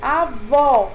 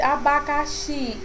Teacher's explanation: ela vai ter uma tonalidade mais forte na última sílaba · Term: oxítona